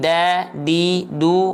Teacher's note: Ujung lidahnya disentuhkan dengan pangkal gigi seri atas. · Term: huruf dal